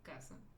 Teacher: Entonces, aquí se acentúan cuando terminan en NS vocal y aquí se acentúan cuando no terminan en NS vocal y su sílaba tónica está en la penúltima sílaba, como la palabra casa. Y en este caso casa, pues no se acentúa y por eso nunca acentuamos la palabra casa. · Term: graves